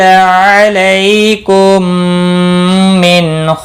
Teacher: میم ساکن کے بعد دوسرا میم آیا ہے، یہاں پر ادغام شفوی ہوگا، گناہ کے ساتھ پڑھیں گے۔